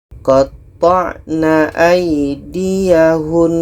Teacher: Seterusnya dalam ayat 50 di sini ketika berhenti ada nun tasydid. Maka kalau berhenti tetap kita dengungkan.